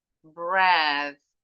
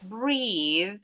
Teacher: Breath, itu TH-nya jangan bergetar. Breath, unvoiced. Breathe, ada E-nya di belakang. Voiced.